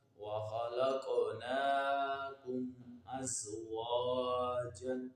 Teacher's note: قاف حروف قلقلہ میں سے آ رہا ہے اور ساکن ہے تو یہاں پر قلقلہ خوب ظاہر ہوگا، کیونکہ ہم نے یہ قاعدہ پڑھا ہوا ہے کہ حروف قلقلہ جب ساکن ہوں تو ان میں قلقلہ خوب ظاہر ہوگا۔